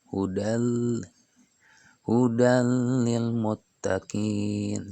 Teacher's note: Berikutnya hudal lil muttaqin, ada fathah tanwin atau ada fathah tanwin menghadap huruf lam yang bertasydid, maka itu hukum bacaannya idgham bila gunah. Hudal, jadi patah tanwinnya tidak terbaca hudan, akan tetapi terbaca lam.